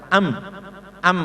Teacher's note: mim sukun karena asal bibirnya ini rapat jadi mim Amah maka juga harus ditekan dan cepat